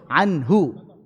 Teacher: Contoh, sebelumnya sukun, anhu, maka hu-nya jadi pendek. Harusnya kan hu, tapi karena sebelumnya sukun jadi pendek